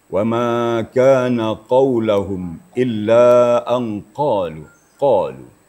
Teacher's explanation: makhraj qaf itu adalah di pangkal lidah. Artinya kalau kita baca qaf, maka pangkal lidah kita naik.